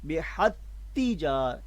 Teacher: ساکن تا کو ہم تجارہ کی پہلی جو حرف تا ہے اس تا مشدد میں ادغام کر دیں گے، جو ہے وہ ملا دیں گے، بحت تجار ایک ہی تا بن جائے گی، ٹھیک ہے۔